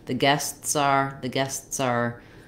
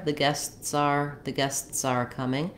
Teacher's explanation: Yeah, you can also, if you may find it easier to use that in linking, the guests are, then my s links to the next word, and it does sound a little bit voiced there